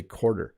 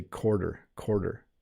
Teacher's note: i think americans have dropped the w sound on that